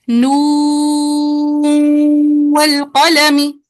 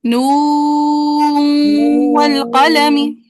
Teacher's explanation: नू का जो वाव है ना, पहले वो खालिज अदा करना है, वाव मद्दा। वाव मद्दा का तूल मुकम्मल करके ना फिर नाक में आवाज लेके जानी है